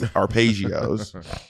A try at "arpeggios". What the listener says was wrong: Okay, they're arpeggios with an open E, not a closed E. Arpeggios. Arpeggios?